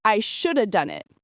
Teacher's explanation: Shoulda is a reduction of should have. It's used very often when talking about past regrets.